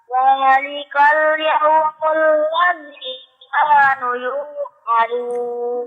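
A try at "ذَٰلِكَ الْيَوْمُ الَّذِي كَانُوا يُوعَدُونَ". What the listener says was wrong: Zalikal yawmul ladzi kanu yu'adun. Nunya panjang nak. Ulangi zalikal.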